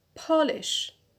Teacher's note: As you can hear, the stress is on the penult. Penult, that is the second from the end on po.